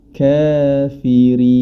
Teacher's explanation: yang bunyinya kafirin huruf ro pada ayat keenam di akhir ayatnya terdapat ro yang berharakat kasrah maka dia dibaca tipis atau tarqik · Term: tarqiq